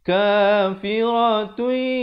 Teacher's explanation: Di sini idgham bi gunnah. Asalnya kafiratun, tun, tetapi bila datang ya kena masuk beserta dengung.